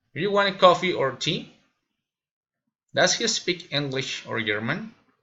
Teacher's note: Alternative questions, raising and falling intonation.